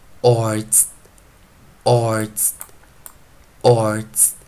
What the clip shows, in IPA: ɔrdz